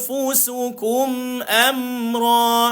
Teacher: gigi atas jumpa bibir, perut bibir bawah